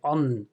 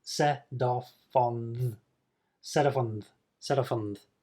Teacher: the N and the TH, or th sound, are made in a very similar position in the mouth. The tongue is forward and near the front teeth, so they are blended together. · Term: linking